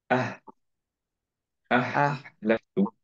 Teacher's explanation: না, একটু উপরে টাংটা টাচ খেয়ে যাচ্ছে বলার সময়। এটা ওপেন মাউথ। হা যেমন বলি, খেয়াল করে দেখি যে হা বলার সময় অ্যাকচুয়ালি কোনো জায়গায় টাংটা টাচ খায় না, রাইট?